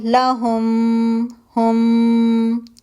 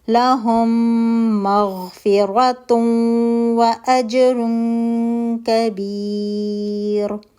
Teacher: میم ساکن میم متحرک کے اندر مرج ہو گیا، میم متحرک جو ہے وہ مشدد ہو گیا ہے. اب آپ یہاں پہ 2 کاؤنٹ کا غنہ کریں گے، میم کے مخرج پر جا کر لہم، ہم. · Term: ادغام شفوی